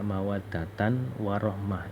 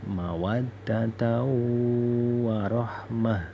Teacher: Tanwin ini dihilangin, langsung masuk ke wa. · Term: idgham bi ghunnah